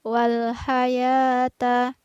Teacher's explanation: Di sini ada huruf ha tipis dan ta biasa ya, bukan huruf to